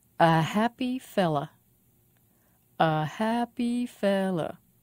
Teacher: a happy fella five syllables stress on fell